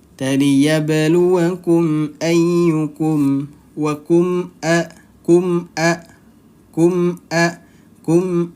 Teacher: mim sukunnya juga dibaca jelas kemudian dibacanya pendek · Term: izhar syafawi